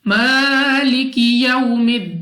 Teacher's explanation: वाव साकिन से पहले जबर, वावलीन बगैर खींचे बगैर झटका दिए मारूफ पढ़ेंगे, यानी जल्दी से पढ़ा जाएगा। · मीम पर खड़ा जबर, 2 सेकंड तक लंबा करना है, खींच कर पढ़ना है